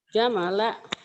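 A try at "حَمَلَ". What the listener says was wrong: Mana jamala? Ada titiknya enggak? Hamala. Hamala.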